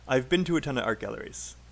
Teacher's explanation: you have one two three four four unstressed syllables okay um and then of course art and galleries are both stressed